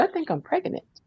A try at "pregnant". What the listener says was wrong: pronounced every syllable pregnant.